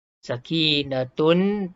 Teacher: Sakinatun, tun jadi tum, tutup mulut beserta dengung. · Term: idgham ma'al gunnah